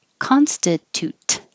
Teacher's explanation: and you can hold the t at the end constitute again hold the t at the end by just putting your tongue in the t position and not releasing